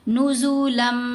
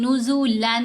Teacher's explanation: नून की आवाज मुदम हो गई इस मीम के अंदर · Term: इदगाम